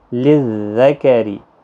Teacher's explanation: را زیر کی وجہ سے باریک پڑا جائے گا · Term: را باریک